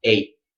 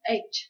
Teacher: Your tongue should come up though to make the T, but then you just decide not to say the T at the end. So put your tongue up, but don't let the air out.